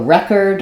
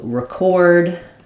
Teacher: but one is a noun and one one is a verb you will sometimes find the noun is stressed on the first syllable and the verb is stressed on the second syllable